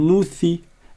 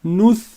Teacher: ça se stoppe au niveau de la consonne sans qu'il n'y ait de voyelle après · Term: sukoun